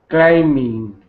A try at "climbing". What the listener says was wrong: Yeah, the B is silent there.